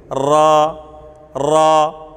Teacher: را کے اندر صفت تقریر ہے، کر کی سی آواز آتی ہے